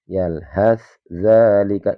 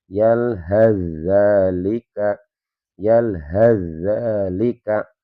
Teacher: Yalhat dzalika itu cara baca yang salah. Jadi huruf tsnya tidak boleh kita baca. Jadi dibacanya langsung ke huruf dznya. Karena ini dua huruf yang berdekatan makhraj dan sifatnya. · Karena ini dua huruf yang berdekatan makhraj dan sifatnya. Cara membacanya dengan memasukkan huruf pertama ke dalam huruf yang yang kedua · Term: idgham mutaqorribain, idgham mutaqarribain